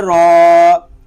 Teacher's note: را کو پر پڑھیں گے کہ را کے اوپر زبر آ گیا ہے، اور الف بھی پر پڑھا جائے گا کیونکہ الف سے پہلے پر حرف آ گیا ہے.